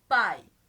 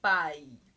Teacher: Oral no exemplo pai, a gente percebe que além de ser um ditongo decrescente, pai, olha só, o som desce.